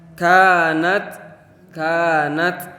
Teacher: kanat ada fathah bertemu Alif Mati maka cara membacanya itu harus diayun